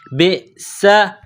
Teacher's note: سین میں سیٹی کی آواز پیدا کریں گے، سین کو باریک کریں گے